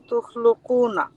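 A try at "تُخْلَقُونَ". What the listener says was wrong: Not lu. Tukhlaquna. Tukhlaquna.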